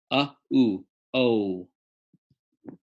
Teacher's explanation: linguistically uh and ooh fused together in a diphthong makes oh